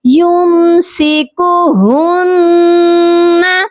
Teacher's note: نون کے اوپر جب یہ والا نشان آتا ہے تشدید جس کو کہتے ہیں تو نون پر لازمی غنہ کیا جاتا ہے